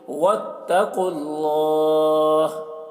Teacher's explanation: قاف کو پر پڑھیں گے، یہاں پر واو اور یہ الف نہیں پڑھا جائے گا، قاف کو لام سے ملا کر پڑھیں گے، اور اللہ کا لام کو پر پڑھیں گے کیونکہ اللہ کا لام سے پہلے پیش ہے.